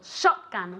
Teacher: Accent on the first syllable.